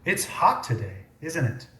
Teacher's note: notice that the first part of the sentence always has fallen intonation